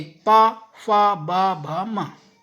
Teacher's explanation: अगर हम इन वर्णों को बोलेंगे तो हमारे जो होठ हैं वो आपस में टच होंगे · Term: ओष्ठ